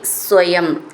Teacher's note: സ്വയം എന്നുള്ളത് സ എന്ന് ഡബിൾ ആയിട്ട് ചൊല്ലണം